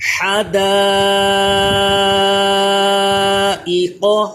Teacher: قاف کو پر کیجئے، حا کو اس کے مخرج سے ادا کیجئے